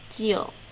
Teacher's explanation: a dot on the bottom so that's the tone mark uh low falling broken starts at low falling and drops